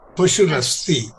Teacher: There the Visarga has changed into a Rephaha.